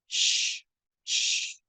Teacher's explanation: Kalau shin itu ada namanya sifat tafashi, menyebarnya udara di antara rongga-rongga mulut ya.